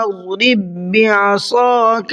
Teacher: ربی عصاک الربی، پہلا والا با نہیں پڑھا جائے گا اس لیے کہ دو با ایک ساتھ آ گئے ہیں، اور جب دو با ایک ساتھ آتے ہیں تو ایک با کا دوسرے با میں ادغام کر دیتے ہیں